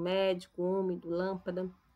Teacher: A palavra tem a antepenúltima sílaba tônica. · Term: proparoxítona